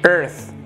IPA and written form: ɝːθ (Earth)